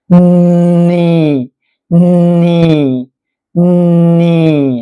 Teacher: ครับอ้ามาคำนี้นะฮะCที่แปลว่าทะเลนะฮะEAตัวนี้ก็ให้เสียงEนะครับผมอ่ะคราวนี้เรามาดูทีละตัวนะSก็ฟันบนฟันล่างชิดกันดันลมออกมาแทรกระหว่างฝันทั้งสองนะฮเป็นใช่มั้ยฮะอ่าแล้วก็ตัวนี้ให้เสียงสระEก็เป็นCนะฮะมาดูช่องนี้นะฮะCแล้วก็Eก็เป็นCที่แปลว่าทะเลนะครับอ่าคราวนี้มาดูคำถัดมานะฮะอี2ตัวนี้นะฮะให้เสียงสระอีครับก็คือตัวนี้นะฮะอ่ะเนอะเน เคยสอนแล้วนะฮะ เสียงต้องออกทางจมูกนะครับไม่ได้ออกทางปากนะครับปลายลิ้นไปแตะที่เพดานกักลมไว้นะฮะไม่ให้ออกทางปากแต่ให้ไปออกทางจมูกแทน